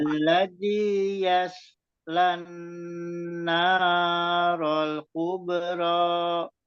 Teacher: di sodenya itu jangan sampai memantul, jangan yalse, itu jadinya kolkolah